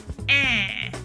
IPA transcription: æ̃